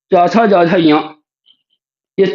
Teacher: श तालव्य शकार इन सबका जो उच्चारण स्थान है वो है तालु